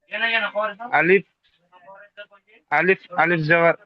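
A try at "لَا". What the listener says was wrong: না ভাই এটা লাম লাম আলিফ জাবার লা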